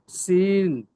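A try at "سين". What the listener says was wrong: একটু টান দিয়ে বলেন, সিন, 3 আলি টান দিয়ে পড়তে হবে। আরো একটু বেশি করে টান দিয়ে পড়েন। এখানে দেখেন নিচে যে 3-4টি অক্ষর আছে পরস্পরের, প্রত্যেকটা অক্ষর 3 আলি টান দিয়ে পড়তে হবে।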